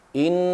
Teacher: Bila kita bertemu dengan nun ada sabdu ataupun syaddah, ya. Nun ada sabdu ataupun syaddah di situ, maka kita dengung 2 harakat.